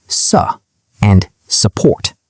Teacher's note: did not pronounce the R in sir or support. It sounded like suh and support.